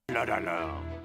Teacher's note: he stresses the last syllable the last part of the word which is typical for French